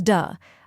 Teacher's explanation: Then comes duh, a soft and relaxed sound like the A in sofa